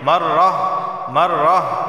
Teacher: اول مرہ مرتن وقف کی صورت میں گولتا ہا ہو جاتی ہے